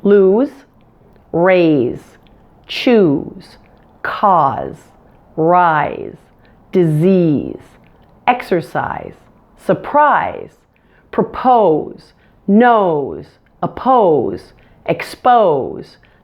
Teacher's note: the majority of the rest of the SE ending words are voiced so you will pronounce them with a Z sound